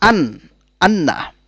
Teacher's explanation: জিহ্বার অগ্রভাগ আর তার বরাবর উপরের তালুর সাথে মিশিয়ে উচ্চারিত হয় নুন অর্থাৎ লামে এর মাখরাজের একটু নিচে উচ্চারিত হয় নুন যেমন আন